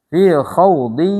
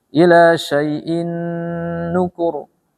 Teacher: Sama-sama masuk dan berdengung.